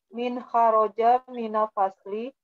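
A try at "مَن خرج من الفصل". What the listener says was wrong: Yakin dibacanya min semua. Sedangkan di akhirnya ada alamat soal, ada tanda tanya. Kalau misalkan dibaca min semuanya kan nggak nyambung kan namanya. Jadi harus kita lihat konteksnya.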